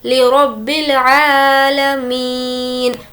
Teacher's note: मी को खींचेंगे क्योंकि या मद्दा है और नून पर जज़म दे देंगे।